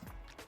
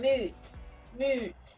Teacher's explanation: they will pronounce it t at the end